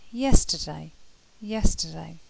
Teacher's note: very quickly sort of squash them together so in this sound the lips begin spread and then move to a less spread position the mouth begins closed and opens to a half closed position